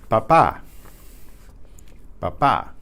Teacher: there's no puff of air with the P